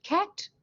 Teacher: have the word cat the the first sound that you hear the k has been stopped by the back of the tongue